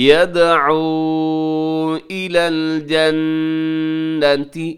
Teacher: جنۃ نون مشدد پہ غنہ ہے